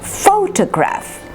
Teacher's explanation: Photograph, 3 syllables. And the first is stressed.